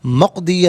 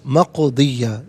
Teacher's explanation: قاف ساکن ہے لیکن حرف قلقلہ ہے نا تو آواز لوٹتی بھی محسوس ہو. مقضیہ نہیں، مقضیہ.